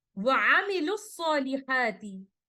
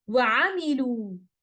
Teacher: upon stopping, we will give the 2 counts of maddu tabi'i to waw mad and stop here like this: wa amilu.